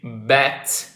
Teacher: the B sound on bat is the one that vibrates more. So, it's a voiced sound.